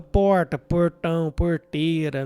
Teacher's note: o meu r era mais retroflexo que o pessoal da capital